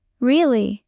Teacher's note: Voice goes up at the end like you're happy. · If you say really with your voice going up, it sounds excited.